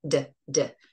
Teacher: not so much air and of course it's voiced